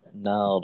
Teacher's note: র যেহেতু মোটা যেন নারাং না হয়।